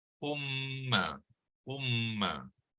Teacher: bila ada tasydid itu mim kita dengungkan sepanjang 2 hingga 3 harakat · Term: idgham